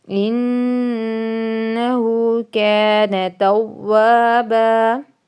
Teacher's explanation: آگے توابا واو یعنی الف سے پہلے زبر ہے تو اس لیے الف مدہ ہے، اور با دو زبر پہ وقف ہو رہا ہے تو الف مدہ جتنا ہی لمبا کریں گے